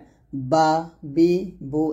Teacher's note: বা টা দুই ঠোঁট মিল করে ওই ঠোঁট থেকে উচ্চারণ করতে হবে